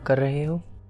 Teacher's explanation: So I guess it's like ra, like a rolled R.